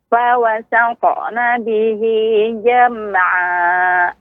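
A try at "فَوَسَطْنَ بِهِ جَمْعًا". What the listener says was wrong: Ya, masih terdengar Ibu untuk fawasato ya. Fawasato. Intinya Ibu, jangan sampai seperti ada suara tertahan. Fawasato. Akan tetapi fawasato. Fawasato. Fawasatna bihi.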